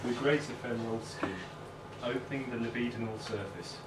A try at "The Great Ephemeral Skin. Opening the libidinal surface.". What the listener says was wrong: That's too fast.